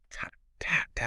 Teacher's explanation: curl the tip of your tongue backward, slightly toward the roof of your mouth, and strike the hard palate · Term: Bengali ta